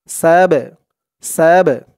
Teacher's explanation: বা টা হচ্ছে কলকলার হরফ ধাক্কা দিয়ে পড়তে হবে কলকলা মানে ধাক্কা দিয়ে পড়া